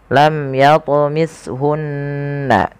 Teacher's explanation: nun berharakat tasydid dan diwarnai dengan warna hijau, yang cara bacanya adalah kita menahan suara bunyi gunnahnya. Lam yatumishunna, tidak langsung lam yatumishunna insu, tapi bukan hanya sekedar tasydid, tapi dia wajib ditahan suaranya.